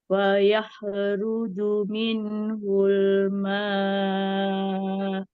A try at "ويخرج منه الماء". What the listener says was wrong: Ada tekanan ujungnya ma. Ma